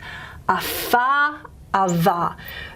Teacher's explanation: most languages of the world will have the labiodental fricative, lower lip to the teeth.